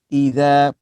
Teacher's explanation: pastikan zal hujung lidah hujung gigi